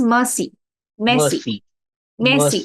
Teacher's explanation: but this R is very soft right so you don't say it as Mercy not in the English sense